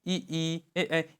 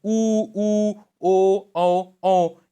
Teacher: जिन स्वरों के उच्चारण में ओठ वृत्तमुखी या गोलाकार होते हैं